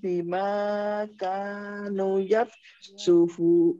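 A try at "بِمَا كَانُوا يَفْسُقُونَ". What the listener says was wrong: bima kanu nunya panjang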